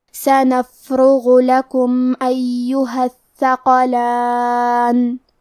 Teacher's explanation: کلمت ایہا میں یا پہ تشدید ہے تو ہمیں تشدید کو ظاہر کرنا ہے۔ کلمت الثقلان میں تھا کی ادائیگی زبان کے سر اور اوپر والے دانتوں کے اندرونی کناروں سے ہے، اور کیونکہ تھا پہ تشدید ہے تو ہمیں 2 حرف کے برابر تھا کو پڑھنا ہے۔ · حرف الراء پہ پیش ہے تو ہم را کو موٹی آواز میں پڑھیں گے، غین کی ادائیگی حلق کے اوپر والے حصے سے ہے، غین حروف التفخیم میں سے ہے تو ہم حرف الغین کو موٹی آواز میں پڑھیں گے۔